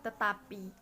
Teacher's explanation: perubahan bunyi T yang biasanya diucapkan apikodental seperti kata tetapi